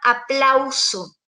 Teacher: o triptongo en este caso si cuando hablamos de un diptongo es una secuencia de dos vocales que están en una misma sílaba por ejemplo con la palabra aplauso tenemos la ay las juntas